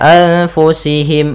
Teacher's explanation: Kemudian anfusihim ada nun mati bertemu fa, hukum tajwidnya ikhfa, caranya adalah kita samarkan nun ke fa